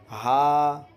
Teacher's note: شروع حلق سے ہا ادا ہوتا ہے، یہ چھوٹا ہا ہے۔